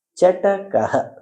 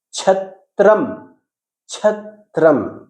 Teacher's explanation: ಚ ಅಲ್ಪಪ್ರಾಣಾಕ್ಷರು ಛ ಮಹಾಪ್ರಾಣವರ್ಣ